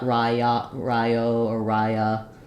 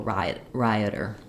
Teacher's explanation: before the flap we have a schwa or an I sound, a really reduced vowel here, rioter. So in the word riot, I would say it's kind of an I sound, maybe a little bit of a schwa.